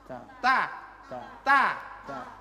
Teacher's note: Penyebutan huruf ta ujung lidah di antara gusi dan gigi atas.